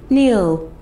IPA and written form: niːl (KNEEL)